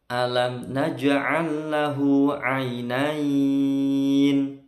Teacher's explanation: Naj'al, jimnya sukun, ini qalqalah sughra